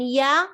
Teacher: middle of the tongue comes up close to the middle of the upper palate but it does not touch